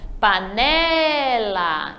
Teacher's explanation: Então, o né é a sílaba forte.